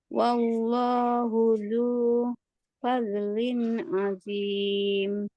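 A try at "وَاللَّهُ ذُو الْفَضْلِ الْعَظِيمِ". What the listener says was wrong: Latih lagi uzonnya ya. Jangan ada suara Z tu. Jangan azim.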